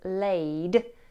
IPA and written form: leɪd (laid)